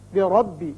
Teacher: را کے اوپر زبر ہے، اس کو پر پڑھیں گے۔